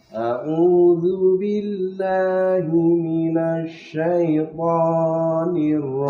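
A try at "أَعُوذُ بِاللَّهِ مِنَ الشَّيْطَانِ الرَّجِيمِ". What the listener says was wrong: Tohnya tuh tadi kepanjangan tuh. 2 harokat saja. A'udzu billahi minasy syaithanir rajim. Jangan kepanjangan. Hati-hati.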